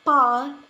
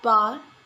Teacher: The sound pa is a voiceless bilabial stop sound. The sound ba is a voiced bilabial stop sound.